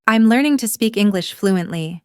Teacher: the rising tone at the end, the flow between speak and English.